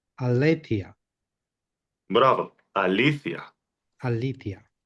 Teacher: The stressor is on the second syllable